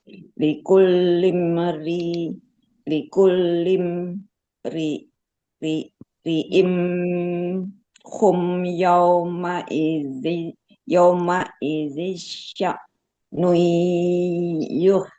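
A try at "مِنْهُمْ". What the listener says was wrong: Minhum tadi lupa. Ulangi, Bun.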